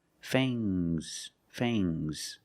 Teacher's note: Use a long A plus the nasal sound, and a soft G.